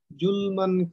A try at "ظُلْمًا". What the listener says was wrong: যুলমান না যা যা যুলমান যুলমান নরম কইরা যা